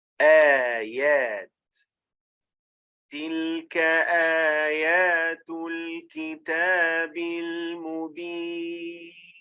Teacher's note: So the word originally starts with a hamza and then an alif, which would then be extended for 2 counts because it is a long vowel. And that's why you must keep this mad intact with this combination. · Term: replacement mad